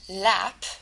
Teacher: in a liquid the air is forced from the mouth laterally from the sides of the tongue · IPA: /l/